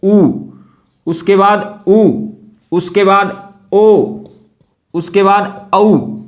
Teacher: जीभ के पिछले वाले हिस्से से बोले जाते हैं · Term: पश्च सवर